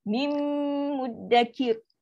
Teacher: Sekarang dia masuk 100%, sebiji bunyi. Nun dia dah masuk ke dalam mim, dah tak ada bunyi nun lagi dah. Bunyi mim je.